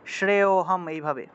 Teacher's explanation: শ্রেয় হম মনে করেন যে শ্রেয়টা টান দিবেন, একটা টান দিবেন, শ্রেয় হম এইভাবে। অর্থাৎ শ্রেয়টা একটু টান দিয়ে উচ্চারণ করলেই অটা চলে আসে, এটাকে আলাদা করে অ উচ্চারণ করতে হবে না। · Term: লুপ্ত